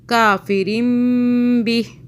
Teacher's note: میم کے بعد با آ رہا ہے تو یہاں ہم نے غنہ کرنا ہے 2 سے 3 سیکنڈ کا ، 2 سیکنڈ کا، کافرم بہ، سٹاپ کیا، بہ پڑھا، آگے